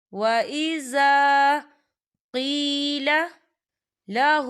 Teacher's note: لا يحب الفساد وَإِذَا یہاں الف مدہ ہو رہا ہے، خالی الف سے پہلے زبر ہے تو اسے ہم 2 حرکت کے برابر کھینچیں گے